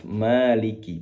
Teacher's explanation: Pastikan kaf di sini tidak terdengar sifat hamesnya atau aliran nafasnya. Walaupun memang secara sifat dia memiliki sifat hames, namun sifat hamesnya itu akan terdengar jelas kalau kafnya sukun dalam kondisi mati.